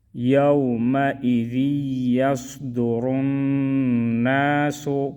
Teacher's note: یا واو زبر یو، میم زبر ما، حمزہ زیر ای، ذال یا دو زیر ذی، یا صاد زبر یس، دال پیش دو، را نون پیش رن، نون الف زبر نا، سین پیش سو، یومئذ یصدر الناس۔ را کو موٹا پڑھیں گے، نون میں غنہ کریں گے